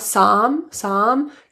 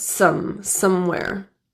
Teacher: Some in somewhere, the vowel is produced as an caret vowel. And this vowel includes a really closed or near closed jaw position, and the lips are just neutral.